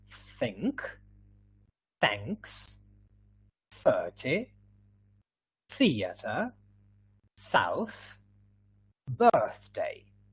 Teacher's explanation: there is a tiny friction yeah with your tongue just behind your top and bottom teeth